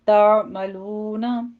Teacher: तामलूना वाव मद्दा अदा कीजिए, 2 काउंट करना है